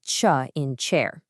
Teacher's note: Africates are kind of this hybrid of an explosion and a hiss